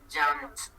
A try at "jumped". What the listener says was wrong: No, the E is not pronounced, so it is jumped.